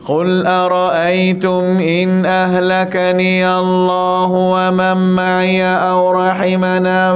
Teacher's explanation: pastikan di sini kalimah Allah di sini tuan-tuan, angkat nada dia sikit.